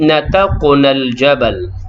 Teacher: qaf yang sukun dalam kalimah tersebut adalah qalqalah sughra, berdetak kecil.